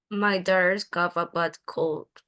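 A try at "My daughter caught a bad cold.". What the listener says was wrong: Okay, this is not cough. This is my daughter's caught. Caught.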